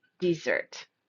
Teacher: stresses the second part of the word desert